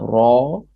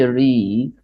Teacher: We say Re when it had the kasra. So I have Ra, heavy letters, and the mouth is full of air. Then I see Re, and this is a light letter.